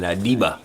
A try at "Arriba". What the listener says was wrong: You gotta roll the tongue. You gotta roll the tongue when you say Arriba.